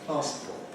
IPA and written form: ˈpɑːspɔːt (passport)